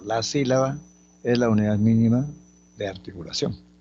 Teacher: Se está afirmando. Es una enunciativa afirmativa. Tiene entonación descendente.